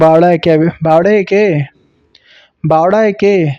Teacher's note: ना ही स्पष्ट ड़ बोल रहे हैं, ना ही स्पष्ट ल बोल रहे हैं, ये बीच की ध्वनि है